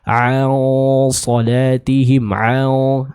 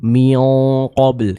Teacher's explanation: dengung atau suara samaran dari hukum ikhfa ini juga akan terbaca dengan tebal.